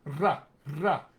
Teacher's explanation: It can be an alveolar trill.